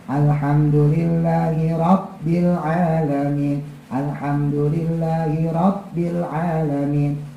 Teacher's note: Ba itu qalqalah, maka harus ada jeda di situ. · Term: huruf qalqalah